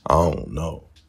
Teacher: initial consonant sounds are sometimes dropped in auxiliary verbs like don't